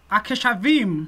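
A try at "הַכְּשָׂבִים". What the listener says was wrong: Haksavim. It's a sin.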